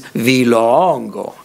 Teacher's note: So it has a rising falling on that long vowel, longo. But with the demonstrative it becomes vilongo, all high tone.